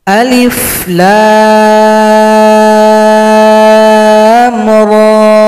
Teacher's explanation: Ada lebih banyak huruf singkatan. Alif, satu ketukan. Lam, enam ketukan, ra, dua.